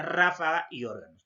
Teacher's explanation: la mayor fuerza de voz en la antepenúltima sílaba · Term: esdrújulas